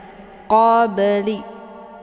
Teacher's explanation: cara bacanya huruf bnya dipantulkan dengan pantulan ringan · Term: Qalqalah, qalqalah sughra